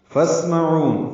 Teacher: ہمس ہوگا سین ساکن، باریک سی ٹی ایسی سفید کی آواز سے ادا ہوگا. عین وسط حلق سے ادا ہوگا اور لمبا کریں گے واو ہونٹوں کی نا تمام گلائی سے